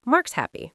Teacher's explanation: In natural speech, we take the is and attach it to Mark. We say, "Mark's happy." >> Mark's happy.